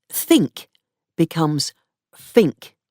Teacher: Th becomes f, and th becomes v. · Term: estuary English